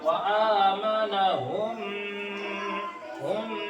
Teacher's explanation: यहाँ एक अलिफ के बराबर गुन्ना करके पढ़ेंगे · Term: इदगाम शफवी